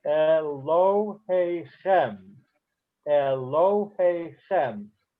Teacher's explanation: There's a slight stress on lo, but the main stress is on the last word. So some words have a secondary accent.